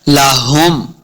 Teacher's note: یہ ہا ہے جو حلق کے نچلے والے حصے سے ادا کرنی ہے